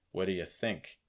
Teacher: and your stress is on think